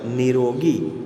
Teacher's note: ફરીવાર જોઈએ, નિસર્ગ ધરાવતા નિહિ પ્રત્યય પછી ર ધ્વનિ આવતો હોય તો ની છે એ દીર્ઘ થાય છે અને વિસર્ગનો લોપ થાય છે. તો અહીંયા ઉદાહરણ જોઈએ કે નિહિ પ્લસ રોગી બરાબર નિરોગી.